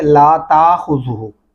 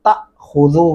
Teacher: الف کے اوپر جزم آ گیا تو آپ یہ حمزہ کی آواز دے گا, اس کو جھٹکے سے پڑھیں گے تأخذو.